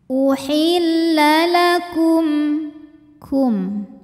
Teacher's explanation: cara baca mim sukunnya adalah dibaca dengan bunyi aslinya m, yaitu jelas, tidak kita tahan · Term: izhar syafawi